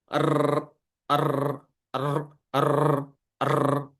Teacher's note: Jadi kalau kita satukan pada sifat keempat dan kelima pada huruf ro ini. Jadi ro itu diawali dengan getaran. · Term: takrir